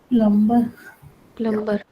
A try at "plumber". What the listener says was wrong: Plumber मत बोलो. The B is silent. You have to say plumber. Yeah, the B is silent. Plumber. M और B जब साथ में आते हैं ना, you have to silence the B. And only the M is pronounced. Plumber.